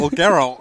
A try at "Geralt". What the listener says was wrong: It's Geralt, right? Wait, you're saying it with a T. But we're not saying it like that. Geralt.